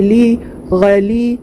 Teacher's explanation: یا ساکن سے پہلے لام کے نیچے زیر ہے، ایک الف کی مقدار کھینچ کر معروف پڑھیں گے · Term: یا مدہ